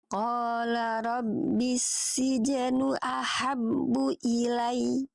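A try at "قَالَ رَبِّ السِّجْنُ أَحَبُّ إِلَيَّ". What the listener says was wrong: Itu kan ilai. Nah, dianya nabar. Ya kalau tadi ilai, lai itu nggak ada nabar ya. Kalau nabar lai. Nah, nabar dianya ya. Ilai. Nabar. Qala rabbis sijnu ahabbu ilai.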